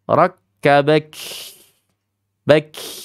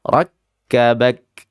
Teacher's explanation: Bukan dibaca rakhawah tapi dibacanya syiddah.